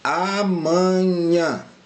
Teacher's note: Quando eu pronuncio amanhã, a sílaba tônica é esse nhã aqui, pessoal. Aqui é a sílaba tônica, tá joia?